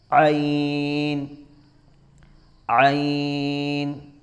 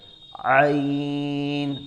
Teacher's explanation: عین عین، اس کو بھی ہم حلق سے نکالیں گے، عین، تھوڑا ہم زور دیں گے حلق پر، جس طریقے سے غرارہ کرتے وقت آ کیا جاتا ہے، اس طرح عین کی آواز ہوتی ہے